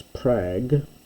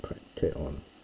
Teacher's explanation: the voiced guttural gamma becomes an unvoiced guttural before the unvoiced dental here, so we get prakteon.